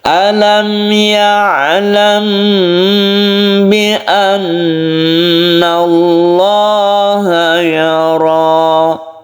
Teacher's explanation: Mim mati bertemu dengan ba ini kita panjangkan. Ini disebut dengan ikhfa syafawi. Kita tahan, kita panjangkan.